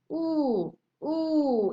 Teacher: oo is a back vowel and in closed position. Ooh, ooh, it's like at the back, ooh, but it's very near the palate.